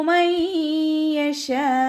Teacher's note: നൂൻ സാക്കിനയ്ക്ക് ശേഷം ഇദ്ഗാം ബിഗുന്നയുടെ അക്ഷരമായിട്ടുള്ള യാ വന്നു. നൂൻ സാക്കിനയെ യായിലേക്ക് ലയിപ്പിക്കുക. ഉന്ന കൊടുക്കുകയും ചെയ്യുക കേട്ടോ.